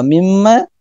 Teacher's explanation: ada gunnah mim, tahan dulu